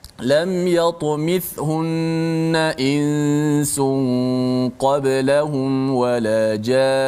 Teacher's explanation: Nun sabdu, walaupun ketika wakaf tetap dibaca panjang dengung itu.